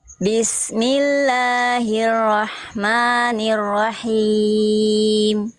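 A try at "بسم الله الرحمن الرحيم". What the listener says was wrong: tinggal mantapkan huruf-ur aja sedikit Bunda tebalkan dan sedikit kuatkan lagi ya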